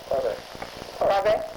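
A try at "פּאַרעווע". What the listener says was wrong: No, just Parve, actually. The E silent.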